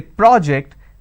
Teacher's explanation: when i'm stressing on the first syllable it becomes a noun